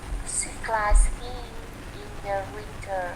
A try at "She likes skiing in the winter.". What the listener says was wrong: Okay, yeah, she likes. No extra sound between she and likes. Không có cái âm nào phụ. Ở giữa cái chữ like và chữ she cả.